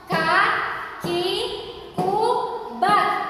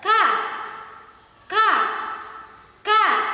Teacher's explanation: Nah, maksudnya adalah keluar dari pangkal lidah dekat tenggorokan dengan menurunkan lidahnya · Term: huruf kaf